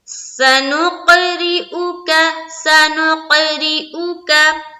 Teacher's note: ये जो रा है इसके नीचे देखिए क्या है, जेर है। जेर आ गया तो इसका क्या मतलब है कि रा को बारीक रखनी है